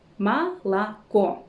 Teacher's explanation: The final O is stressed, that's why we pronounce it as O, but the other ones, we pronounce them as A. Молоко. This is called vowel reduction, and it's an important rule in the Russian pronunciation.